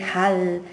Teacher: There's a little bit of a sound stretch, tawassut